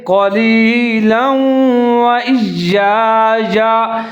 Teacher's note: اگر آپ نے وقف نہیں کرنا، ملا کے پڑھنا ہے تو لام کے اوپر جو دو زبر ہے اس کو واو کے ساتھ ملا کے پڑھیں گے، ادغام کریں گے